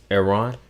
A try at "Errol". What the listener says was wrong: No, it got an L at the end. Yeah, it say ERROL. Errol.